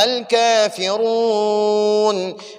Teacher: را کو پر پڑھیں گے، کیونکہ ہم نے قاعدہ پڑھا ہے کہ را کے اوپر جب زبر، را کے اوپر جب زبر یا را کے اوپر پیش ہو تو را کو ہم پر پڑھیں گے۔ ادھر را کے اوپر پیش ہے تو ہم اب را کو پر پڑھیں گے